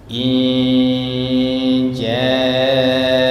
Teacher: agak lama-lama sedikit dan nunnya itu disamar-samarkan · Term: ikhfa